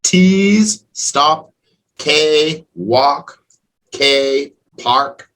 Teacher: those e d sounds are all t sounds